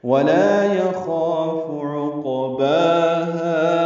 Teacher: یخاف میں خوا پر الف مدہ ہے، یہ بھی پر ہے اور 2 حرکات لمبا ہے ، فا کو جلدی پڑھیں گے، عقباہا عین وسط حلق سے